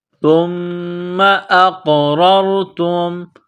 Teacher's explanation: قاف کو موٹا کرنا ہے، قاف ساکن ہے، یہاں پر قلقلہ کریں گے۔ اقررتم، را کو را کے ساتھ ملانا ہے۔